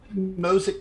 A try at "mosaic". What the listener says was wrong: Mosic? Not quite. We need like another like vowel in there. Mosaic?